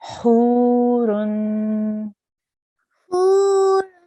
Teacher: Make sure this ha comes from your throat. So it's very close to the ha sound, but it's slightly different. · So it's very close to the ha sound, but it's slightly different. So it still comes from the middle of your throat.